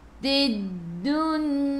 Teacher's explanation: Lam tak ada sukun, selepasnya ada sabdu, terus tekan ke dalam dal. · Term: alif lam syamsiyah